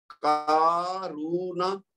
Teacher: بس نون کو لمبا نہیں کریں گے، کاف کو بھی لمبا کریں گے کیونکہ الف مد ہے، اور را کو لمبا کریں گے کیونکہ واو مد ہے